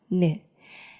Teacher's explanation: 니은은 혀 끝이 윗니 뒤쪽에 닿는 모양